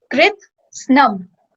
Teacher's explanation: So the S, you can see it's half S. So it's not sa, it's just s.